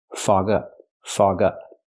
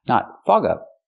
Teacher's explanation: it's a phrasal verb so you stress both words